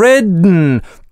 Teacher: А в ridden только носовой взрыв и никакой паузы. В этом слове связки гудят без остановки.